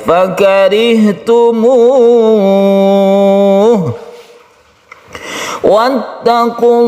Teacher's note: Fakarihtumuh wattaqullah ini juga menjadi mad arid lisukun. Lafaz Allah lafzul jalalah yang dibaca dengan tafkhim karena sebelumnya ada dhamma maka dibaca tebal. Kemudian kita wakafkan dengan wakaf mad arid lisukun yang bisa sampai 3 alif.